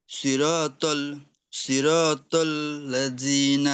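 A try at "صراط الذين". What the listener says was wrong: সিরাতাল্লাযিনা হয়ে যাচ্ছে, এটা জিমের দিকে চলে যাচ্ছে। সিরাতাল্লাযিনা, জিহ্বার আগা থেকে আসবে, হ্যাঁ। জিনা না, জিনা, জিনা একদম আগা থেকে চিকন। প্রথমত সদ মোটা করতে হবে, তারপরে জালের উচ্চারণ চিকন করতে হবে।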